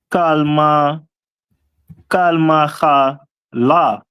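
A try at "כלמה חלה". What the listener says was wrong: Right, Kalma Chala. That's excellent.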